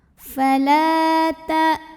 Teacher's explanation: Maka cara bacanya dipanjangkan lamnya 2 harokat saja. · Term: mad tabi'i zahiri